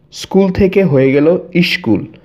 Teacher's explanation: শব্দের আগে একটা স্বরধ্বনি চলে আসছে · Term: আদি স্বরাগম